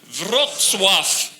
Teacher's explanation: no matter how many V's you put after each other at the end of the word in Polish, you still blow through it. So it's an F sound